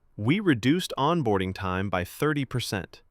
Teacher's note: Notice the falling tone at the end. That's confident. · Emphasis guides attention. Stress the verb and the number.